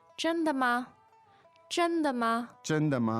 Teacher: the tones there are first and two neutrals